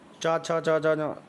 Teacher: चा जा जा तालू से बोला जाता है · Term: चा वर्ग